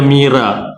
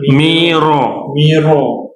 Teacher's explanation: kita buat vokal O di situ untuk kita nak tebalkan dia lah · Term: baca tebal